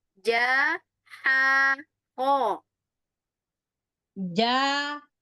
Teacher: Tenggorokannya agak sempit sedikit dibandingkan dengan H